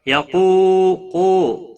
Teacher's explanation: قاف حروف مستعلیہ میں سے ہے، پور پڑھا جائے گا۔ قو واو مدہ ہے، 1 الف کے برابر کھینچ کر پڑھیں گے۔